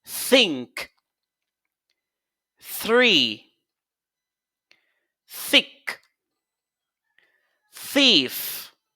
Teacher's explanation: vous placez c'est la langue entre les dents supérieures et les dents inférieures et puis vous sifflez de l'air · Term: consonne sourde